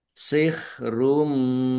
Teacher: Masuk dengan mendengung. Maksudnya langsung masuk ke huruf mim dumah tanwinnya tidak dibaca. Ditahan biar tampak mendengungnya. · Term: Idgham bighunah